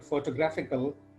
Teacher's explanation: in the case of the word photographical, the stress falls on the third syllable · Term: word stress